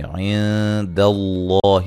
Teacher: لفظ اللہ کو موٹا ادا کریں گے، اس سے پہلے زبر ہے